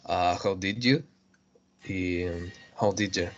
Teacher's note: Taking a full vowel sound like u and reduce it to a schwa